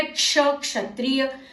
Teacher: क और श को मिलाकर तेजी से बोले